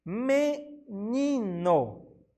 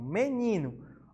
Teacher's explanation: a penúltima sílaba é a tônica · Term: paroxítonas